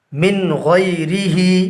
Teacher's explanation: نون ساکن کو ظاہر کر کے بلا غنہ کے جلد ادا کریں گے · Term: اظہار